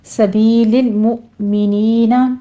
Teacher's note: یا مدہ ہے دونوں جگہوں پہ، سبی میں بھی مؤمنی میں بھی 2 کاؤنٹ کیجئے